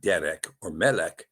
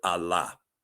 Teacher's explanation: its pronunciation will be centered on the ultimate syllable and not the penultimate syllable